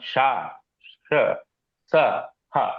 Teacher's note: open throat తో చెప్పాల్సినవన్నీ కూడా అందుకనే వీటిని వివృతం అన్నారు